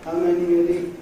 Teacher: Neither has /h/s, a schwa on the first one ('had' /əd/), just /i/, not /iː/ on the second one (‘he’) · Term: weak form